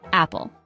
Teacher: It is a two-syllable word. Stress is on the first syllable.